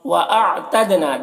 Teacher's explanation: نا میں الف مدہ ہے ایک الف کے برابر کھینچیں گے